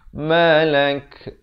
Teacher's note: kalau waqaf pada huruf kaf, diberikan bunyi hamas ataupun bunyi angin itu.